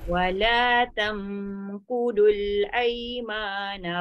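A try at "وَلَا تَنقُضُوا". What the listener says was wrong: Ha, jangan kudul, kudul jadi dal. Tebal.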